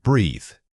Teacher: This is a voiced example, meaning you must feel your vocal cords buzzing as you speak it. Don't just blow air, actively vibrate your voice while maintaining that tongue placement.